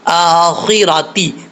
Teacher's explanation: تا کا مخرج زبان کی نوک اوپر والے دانتوں کی جڑوں سے لگے تو تا پڑھا جاتا ہے